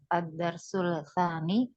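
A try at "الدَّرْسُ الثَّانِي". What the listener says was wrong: Disambung dia alif lamnya syamsiyah. Ad-darsus tsani, ad-darsus tsalis.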